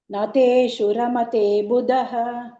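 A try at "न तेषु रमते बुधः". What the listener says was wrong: Buddha, the little more stress.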